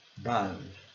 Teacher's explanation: Observando aqui que a sílaba forte é a segunda